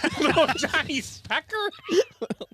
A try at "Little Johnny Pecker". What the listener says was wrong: No S. Little Johnny Pecker.